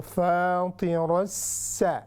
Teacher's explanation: रा मफ्तूहा है। It means कि हम इसको हैवी करके पढ़ेंगे और फिर उसको गिरा देंगे, चूँकि आगे सीन है।